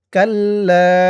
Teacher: জবরের পরে খালি আলিফ এক আলিফ টান